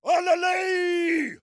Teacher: He makes the final syllable a diphthong. He doesn't say alale, he says alalei.